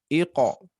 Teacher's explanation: Qalqalah huruf qaf seperti biasa mengarah ke harokat fathah, menyerupai ya. Jadi tentunya tidak difathahkan, tapi sifat qalqalahnya menyerupai harokat fathah, menjadi iqa.